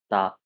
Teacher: आप देखोगे जीभ आपकी दांत में टच करेगी